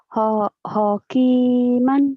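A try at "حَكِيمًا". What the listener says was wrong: Ho itu kalau ada titiknya, ini kan nggak ada titiknya.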